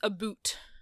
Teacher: And people don't realize that what they're trying to imitate is this Canadian raising. But Americans hear Canadians say the word about, as in, like, I'm reading a book about dogs, as a boot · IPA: [əˈbut]